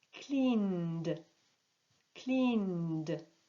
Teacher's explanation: Clean, n, n. Le verbe clean se termine par un son vibrant. On va donc prononcer cleaned, cleaned.